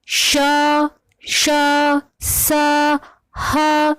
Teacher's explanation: दूसरा है संघर्षी या ऊष्म संघर्षी। अब इन व्यंजनों के उच्चारण में हवा घर्षण या संघर्ष करती हुई बाहर निकलती है